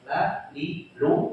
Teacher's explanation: lam itu termasuk yang istifal. Kondisi pangkal lidah enggak naik. Maka hurufnya relatif tipis. Dibacanya tipis.